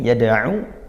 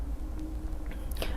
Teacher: Ain maka makhrajnya dari tengah tenggorokan